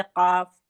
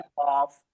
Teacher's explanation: अब पढ़ते हैं थोड़ा सा हल्का सा मुंह को गोल करके कौफ